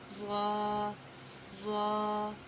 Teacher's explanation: زوا کا مخرج ہے زبان کی نوک اور ثنایا علیہ کا سرا